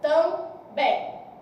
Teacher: Quando eu falo também, apresentou o I nasalizado. Isso significa que aqui, ó, houve uma nasalização, porque apresentou uma vogal que não estava aparecendo ali, nasalizada.